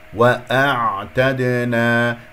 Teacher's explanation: ساكنه يجري فيها الصوت فتره زمنيه بسيطه. واعتدنا، الهمزه والعين متجاوره، الهمزه من اقصى الحلق، العين من وسط الحلق